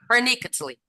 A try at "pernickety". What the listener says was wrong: Pernicketly. Pernicketly? There's no L.